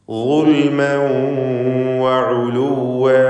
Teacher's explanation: ളുൽമൻ വ തൻവീൻ ശേഷം വാവ് ഇവിടെ ഇദ്ഗാം ബിഗുന്ന നാഖിസ് നൽകി വാവിലേക്ക് ലയിപ്പിച്ച് മണിക്കണം തൻവീനിനെ.